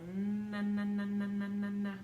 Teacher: bilabial sounds it just means you're using both of those lips